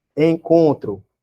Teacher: você não está escutando o N, está escutando o E abafado, né? Nasalizado, né? · está escutando o O nasalizado, ó, saindo pelo nariz, uma parte do som. Você não escuta o N.